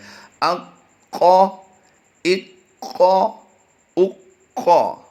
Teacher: قاف کی ادائیگی کرتے ہوئے ہم نے قلقلہ بھی کیا ہے اور قاف کی ادائیگی کو پر بھی کیا ہے